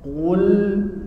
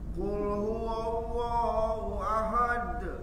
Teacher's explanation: Tekan lagi qafnya. Qul. Bibirnya maju.